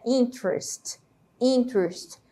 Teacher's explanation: é como se essa letra e não existisse E juntasse aí a letra T com a letra R